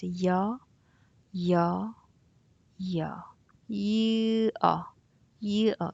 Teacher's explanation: you add a y before you actually glide onto that sound